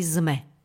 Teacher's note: Rovnako aj sme. Neznelá párová s sa pri stretnutí so znelou nepárovou m mení na znelú párovú z.